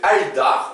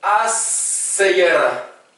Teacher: c'est ce qu'on appelle les lettres solaires qui amènent un redoublement. Au lieu de mettre al-dar, on dit eddar.